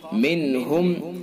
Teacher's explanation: اظہار حلقی، یعنی جلدی سے اپنے مخرج سے ادا کریں گے